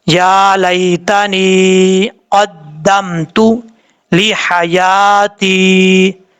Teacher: یا ساکن سے پہلے زیر ہو تو یا مدہ ہوتا ہے، یہاں پر دیکھیں یا ساکن سے پہلے زیر ہے، یا مدہ ہے، ایک الف کی مقدار اس کو لمبا کر کے پڑھیں گے